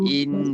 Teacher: Jadi kita tekankan in dua harakat. In dengung tu dua harakat. Wajib bulu gunnah, wajib dengung.